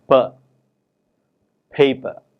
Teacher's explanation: For example, when we have a word such as paper, the first syllable pay is stressed, and it is clearly heard to be pronounced with more breath than per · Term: extra breath force